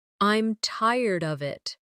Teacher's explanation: I'm tired of it, with of sounding almost like uhv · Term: weak forms